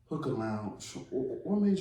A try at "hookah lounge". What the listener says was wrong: he's almost sounded like you said Hooker Hooker I'm like no no no no no no hookah lounge